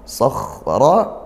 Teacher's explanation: kha sukun dialirkan ya suara dan desisan nafasnya, makhrajnya dilepaskan, dibaca dengan tepat. Ra-nya tafkhim karena dia berharokat fathah tebal seperti itu. · Sakhra, kha sukun dialirkan ya suara dan desisan nafasnya, makhrajnya dilepaskan, dibaca dengan tepat. Ra-nya tafkhim karena dia berharokat fathah tebal